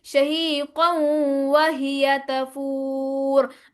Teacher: تنوین کے بعد واو آ رہا ہے، حروف یرملون میں سے ہے تو اس لیے ادغام کریں گے